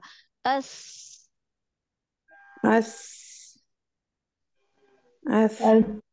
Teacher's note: सा के लेटर में आवाज कम, सांस ज्यादा होती है।